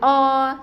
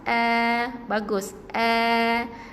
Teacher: Maksudnya bunyi dia a. Sama-sama sebut a, bukan o. Nipiskan suara, senyum luas-luas.